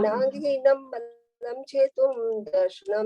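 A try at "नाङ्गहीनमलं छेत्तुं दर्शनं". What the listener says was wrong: नांगहीनम मलम। नांगहीनम मलम नहीं है, नांगहीनम अलम। आप डॉट लगा के अलम ही बोलिए। नांगहीनम चेतुम अलम है वो शब्द। नांगहीनम अलम। और डॉट तो इसलिए हटवाइए कि वहाँ मलम छपा हुआ है ना, इसलिए उसमें डॉट नहीं आएगी।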